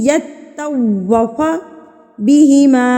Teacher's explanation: تو واؤ کو آپ نے ہونٹوں کی گلائی سے ادا کرنا ہے